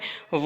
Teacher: व को बोलते हैं दंत ओष्ठ, यानी कि दंतोष्ठ ध्वनि बोलते हैं।